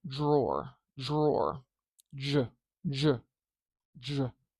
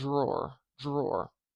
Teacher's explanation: do you hear that how it kind of turns into more of a j sound · something interesting happens when a D and an R collide and are close together. It turns into something called a palatal or palatalized sound